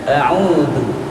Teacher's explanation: zal, ujung lidah dengan ujung gigi